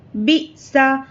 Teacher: حمزہ ساکنہ کو جھٹکے سے پڑھنا ہے